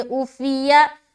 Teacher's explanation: جو اوفیہ پڑھتے ہیں نا وہ عین کو حمزہ سے تبدیل کر دیتے